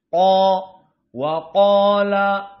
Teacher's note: qala dalam keadaan tafkhim qof huruf tafkhim Apalagi ditambah dengan dia Mad qo waqala lebih besar tafhimnya dan shaba Shad huruf tafhim maka